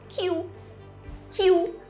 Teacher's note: A gente transforma o L final em um U.